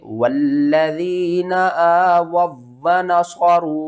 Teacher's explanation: वाव साकिन से पहले पेश है, हरूफ मद्दा है, एक अलिफ के बराबर खींचना है, लेकिन ऊपर छोटी मद है, मद्दे मुत्तसिल, तो इसको आपने 3 अलिफ के बराबर खींच कर पढ़ना है